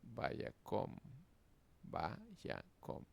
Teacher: la última sílaba es cerrada, termina en mem y átona, por lo que la vocal es kametz hatuf · la kametz es hatuf. Y se pronunciará como una O.